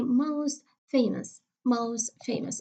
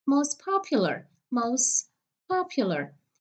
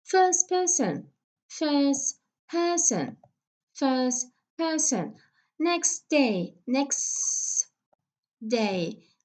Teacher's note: Okay, there is no T that you can hear.